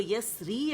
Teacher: را جو ہے یہ باریک پڑھی جائے گی, سافٹ پڑھی جائے گی